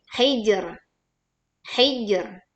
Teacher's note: hijr tetap dipantulkan hijr, tapi ro sukunnya di sini karena wakaf ya dibaca tipis karena ro sukun karena wakaf didahului huruf bersukun dan didahului huruf yang bertanda kasroh.